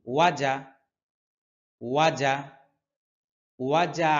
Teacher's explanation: আসলে এখানে জিমের মধ্যে কলকলা হবে না যেহেতু এখানে জবর আছে